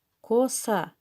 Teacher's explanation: ударение падает на второй слог